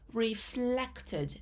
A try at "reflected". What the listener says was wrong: I want an L sound, so it should be reflected.